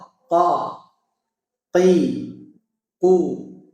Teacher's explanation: Ke langit-langit yang lunak sini, ya. Langit-langit yang lunak bagian belakang. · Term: Qaf